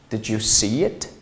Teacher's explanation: 就是浊辅音的爆破音▁d▁d▁d▁加上半元音▁ye▁ye▁ye，▁哎，正好同化成什么▁ch▁对应的▁ch。